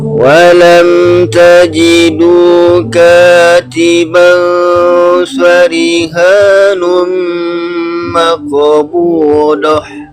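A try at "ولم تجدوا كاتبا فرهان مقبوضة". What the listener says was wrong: Bukan do. Gini Pak, huruf dal, bukan huruf dal lagi. Huruf do itu ujung lidahnya jangan dilipat. Bukan da, bukan do, bukan. Tapi ujung lidahnya datar aja. Datar. Terus ketika menekan ke gigi itu yang ditekan sisi lidahnya. Bukan ke ujungnya. Fokus ke sisi lidah.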